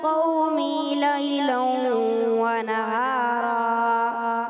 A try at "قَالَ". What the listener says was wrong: قال، قاف بھی موٹا، الف بھی موٹا، ابھی بتایا تھا نا، الف بھی موٹا. قال رب إني دعوت قومي ليلا ونهارا.